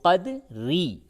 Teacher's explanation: وقف کی حالت میں قدر اور وصل کی حالت یعنی ملا کر کے جب آپ پڑھتے ہیں تو قدری، را زیر ری باریک پڑھیں گے